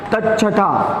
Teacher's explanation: त के बाद च छ आए तो त का च हो जाता है